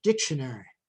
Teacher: And another pattern is full vowel, reduced vowel, reduced vowel, reduced vowel, as in the word dictionary